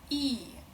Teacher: E is a front one, front closed vowel, E.